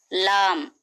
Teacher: लाम मखरजे जलकी जबान की नोक के करीबी हिस्से को ऊपर के दांतों के मसूड़ों को लगाने से लाम अदा होता है।